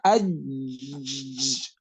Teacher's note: اج میں دیکھیں اج وہ تو قلقلہ ہے نا، اس کو چھوڑ دیں. اج سختی سے آواز رک گئی نا، سختی سے پڑھا اج، آواز چل نہیں سکتی